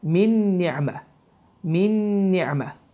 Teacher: Bu zaman min sözündə olan sükunu nunun oxunmur. Niə sözündə isə nun hərfi şəddələnir və düzgün oxunuş bu formada oxunur.